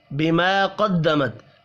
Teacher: قاف حروف مستعلیہ ہے، پر پڑھنا ہے